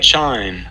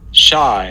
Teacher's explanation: Just to show you kind of what the amplitude rise time is about, this is shy, chime, shy, chime. So the ch in chime is supposed to go from the silent part in the T to the peak of the amplitude a little more quickly than this fricative sequence in shy